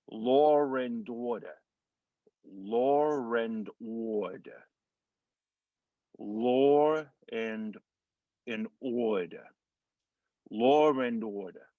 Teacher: Now, LAW, even though it ends with a W, it still has that vowel sound at the end of law, and then going from law and, so we're getting the intrusive R between law and. Now, the non-rhotic R, we're kind of dropping that R sound in order, so it's almost going to be like an ODER.